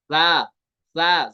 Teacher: सा जो है ये सीटी के बगैर अदा होता है। सा, सा जुबान के सिरा और ऊपर के दांतों के अंदरूनी किनारे से